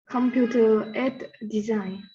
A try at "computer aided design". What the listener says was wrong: So the middle word there is aided. Aided. Aided. Computer aided design. And again, you have to be careful to pronounce the D sound at the end for it to make sense. Computer aided design.